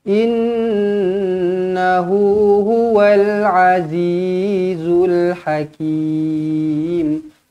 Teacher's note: nun sabdu di sini dengungkan dengan 2 harakat wajibul gunnah